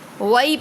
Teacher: یا ساکن سے پہلے زبر ہے تو یالین ہو رہا ہے